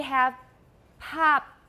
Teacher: when it's the last sound in the word, we often don't explode it, we don't release the stop